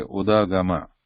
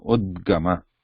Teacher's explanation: Because it is on the top, we only pronounce the consonant part without any vowel part